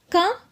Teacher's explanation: நாக்கின் முதல் பகுதி மேல் அன்னத்தை ஒட்டும்போது க அப்படின்ற எழுத்து பிறக்குது